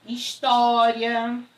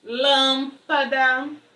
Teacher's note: Proparoxítonas apresentam a sílaba tônica na antepenúltima sílaba da palavra. História. Aí você já vai saber, olha só, Se história tem acento, então esse iria é um hiato.